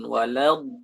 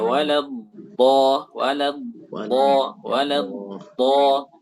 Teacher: Disentuhkan dengan gigi geraham, baik itu dari sebelah kiri maupun sebelah kanan. Jadi yang disentuhkan itu tepi lidah ya, bukan ujung lidah itu dibelokkan